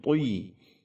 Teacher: huruf to kasrah, dia harus tetap tebal, itbaq super tebal.